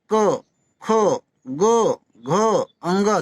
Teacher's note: कंठ में हमारा जो गर्दन के बीच कंठ बोलते हैं इसे, है ना, इनमें उच्चारण कंठ से स्पर्श, हमारी जो हवा होगी कंठ से स्पर्श करके आएगी।